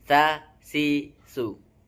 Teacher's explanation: Ujung lidah bertemu dengan ujung gigi depan yang bagian atas.